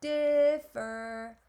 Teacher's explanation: That first syllable is our stress syllable. Since the first syllable is a stress syllable, I don't double the R in the second syllable.